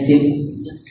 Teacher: sin ini adalah huruf yang keluar daripada hujung lidah. Di mana hujung lidah kita? Di bawah gigi kaci.